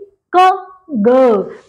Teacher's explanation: Back of the tongue and soft palate. आप बोल के देखिए अपने आप, आपकी जो जीभ है, आपकी टंग है, it will गो to that position.